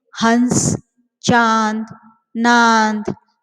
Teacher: अनुनासिक को और एक शब्द से हम उच्चारण करते हैं, वो है चंद्र बिंदु। इसका उच्चारण जो है मुख और नासिका दोनों से होता है, इसलिए इसे अनुनासिक स्वर कहते हैं। ये ध्वनियां वास्तव में क्या है, स्वरों के गुण हैं, जैसे हंस, चांद, नांद आदि।